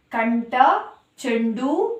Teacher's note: ಠ ಮತ್ತೆ ಡ ಎರಡು ಬಂದು ಟ ವರ್ಗಕ್ಕೆ ಸೇರಿದೆ ಹಾಗಾಗಿ ಇಲ್ಲಿ ನಾವು ಣ ಅಕ್ಷರವನ್ನ ಉಚ್ಚಾರಣೆ ಮಾಡ್ತೀವಿ